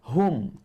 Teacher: Dan ingat dua sifat. Hams dan juga rokhawah pada huruf ha. Hum. Terlepas suara, terlepas angin.